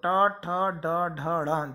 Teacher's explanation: टा, ठा, डा, ढा, णा, ये कहलाते हैं मूर्धन्य वर्ण, मूर्धा को स्पर्श करते हुए वायु निकलेगी, तो टा, ठा, डा, ढा, णा, जब आप इन वर्णों को बोलेंगे तो आपकी जो जीभ है वह ऊपर की ओर टच होगी